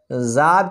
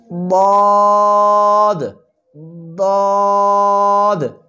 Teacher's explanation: مخرج زبان کی کروٹ اور اوپر کی داڑھوں کی جڑوں سے ادا ہوتا ہے۔ زبان کے کنارے اگل بغل کروٹ، جب یہ اوپر کی 5 داڑھوں سے زبان لگتی ہے تو اس سے ضاد ضاد ادا ہوتا ہے۔